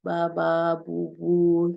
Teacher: Lalu baba, biasanya yang paling gampang tuh yang bilabial sounds. Jadi suara yang dihasilkan oleh dua bibir, atas dan bawah.